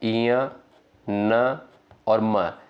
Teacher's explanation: ये आपका नासिक से नासिका से उच्चारित होने वाले वर्ण होते हैं · नाक और मुख के द्वारा जो है उच्चारित होने वाला वर्ड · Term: नासिक्य वर्ण